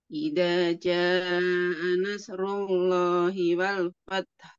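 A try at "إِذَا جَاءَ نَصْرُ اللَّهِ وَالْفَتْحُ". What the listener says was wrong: Ya, catatan nanti huruf shadnya hati-hati, bukan huruf sin ya.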